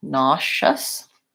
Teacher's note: I would rewrite it spell it more like this nah just nauseous first syllable stress and vowel ah here and a just a schwa sound here so that's an